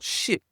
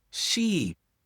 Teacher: Ship, c'est un vowel court. Tu as entendu le I, mais c'est très court, ship. Mais sheep, le vowel E, c'est long. Donc, tu prononces vraiment long le vowel.